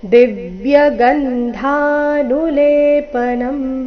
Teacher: ಧ ಮಹಾಪ್ರಾಣ ದೀರ್ಘ ಬರಬೇಕು